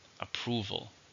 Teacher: three syllables stress on a second